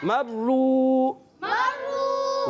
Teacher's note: را کو پر پڑھیں گے کیونکہ را پر پیش ہے، اور مشدد ہونے کی وجہ سے تھوڑا رک کر ادا کریں گے، واو مدہ، ایک الف کھینچیں گے۔